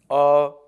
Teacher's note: जैसे अ का उच्चारण स्थान है कंठ